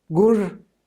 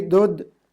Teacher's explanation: voiced aspirated stops merged with unaspirated stops in Dardic. Kashmiri gur, horse, but Hindi ghoda.